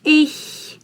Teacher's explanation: So the first combination is ch. It's ch, and it's a very soft sh sound.